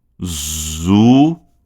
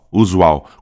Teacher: esse som de U aqui vai ser substituído pelo W